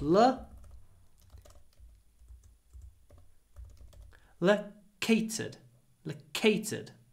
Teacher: Try to make the A short because it comes before an unvoiced T.